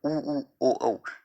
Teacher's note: तो इसमें देखो गोल उ, ओ, औ, इनको आप चारों को उच्चारण करके देखो, अपने होठों का आकार जो है वो गोल हो जाएगा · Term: वृत्ताकार स्वर